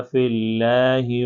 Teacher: تو یہاں پر دیکھیں یہ فی اللہ ہے نا، لفظ اللہ سے پہلے جو ہے زیر ہے، تو اس لیے ہم اس کو باریک کر کے پڑھیں گے. فی اللہ نہیں پڑھ سکتے، فی اللہ کر کے ہی پڑھیں گے.